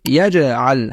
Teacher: Uchinchisi, eng kuchsiz darajadagi qalqala. Bunda qalqala harf soʻzining oxirida emas, balkim oʻrtasida sukun bilan keladi. Natijada qalqala eng kuchsiz holatda ifodalanadi.